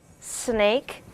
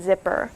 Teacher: with the S as in snake, the feather will move more than with the Z sound as in zipper. So Z, my feather does not move.